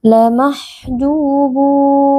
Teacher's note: tanwin yang bertemu dengan huruf lam hukumnya adalah Idam bila gunah kita memasukkan tanwin ke dalam lam tanpa berdengung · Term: idgham bila gunnah